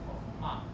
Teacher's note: So the last syllable is accented.